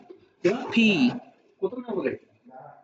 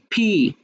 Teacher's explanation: দুই ঠোঁট একসাথে হয়ে একটু বাতাস, অর্থাৎ হচ্ছে ফয়ের মতো উচ্চারণ হবে।